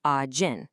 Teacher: The ch softens to a J.